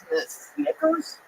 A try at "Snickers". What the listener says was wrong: Dude, did you know that those aren't 2 G's in there? That it's a C and a K? Say it again.